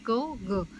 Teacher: जीभ का पिछला भाग तालु नरम तालु को छूता है।